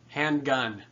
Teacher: am the stress comes on the first word a spondy handgun that has the stress on both syllables now there's a little bit of drop off and handgun still